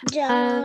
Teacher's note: because it's a waqf, we will only pronounce the sound of noon